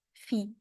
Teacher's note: So I know there is no 2 dots under the ya as you would normally have for a ya, but it is still a ya here. And the ya is there to elongate the kasra I, fi. So make it a bit longer here.